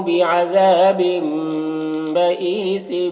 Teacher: تنوین کے بعد با ہے تو تنوین کو میم سے بدل کر غنہ اور اخفا کے ساتھ میں پڑھیں گے, اس کو اقلاب کہتے ہیں.